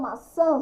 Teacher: Quando eu falo maçã, sai o som nasal.